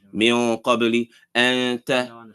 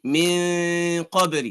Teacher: You're hiding the noon a little bit. You're hiding the sound. Noon sound. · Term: Ikhfa